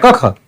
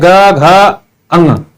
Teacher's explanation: क और ख में जो पहला है वो कंपन नाम मात्र का है, या फिर कह सकते हैं नहीं हो रहा है, क ख। लेकिन जब आगे बढ़ते हैं ग, घ, अंग, देखिए यहां तो हो रहा है ना वाइब्रेशन, क ख, फिर ग, घ, अंग, देखिए यहां पे वाइब्रेशन हो रहा है। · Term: अघोष